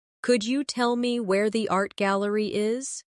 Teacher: In connected speech, could you becomes could ya.